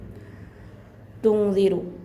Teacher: ज़ाल की आवाज़ थोड़ा ज़ुबान को थोड़ा बाहर लाकर ज़ाल का मखरज अदा करना है